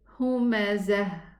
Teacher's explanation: If I stop here on this word, I'm going to say humazah. I'm going to stop with a ha. But if I connect, I'm not going to pronounce a tanween because I have a lam here and it's idgham.